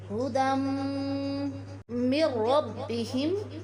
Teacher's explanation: دال کے اوپر 2 زبر ہے، یعنی 2 زبر کی تنوین ہے، اور تنوین کے بعد حروف یرملون میں سے حرف میم آیا ہے، اس لیے یہاں ہم غنہ کے ساتھ ادغام کریں گے